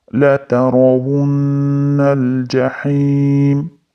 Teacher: La tarawunna ham nun tashdid bilan kelganligi uchun g'unna qilib ushlab turamiz. Undan keyin lamga urishtiramiz.